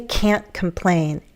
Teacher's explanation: But in addition to that emphasis on the A and then the N, we use a glottal stop in American English